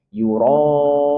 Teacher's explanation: Un boleh dibaca dua, boleh dibaca empat, boleh dibaca enam harakat. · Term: mad arid lis sukun